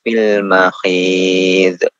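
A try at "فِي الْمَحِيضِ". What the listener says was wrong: Jadi jangan dikolkolakan, Pak. Mahid. Di tengah itu kan.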